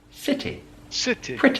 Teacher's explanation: squash that sound at the end it's a short eh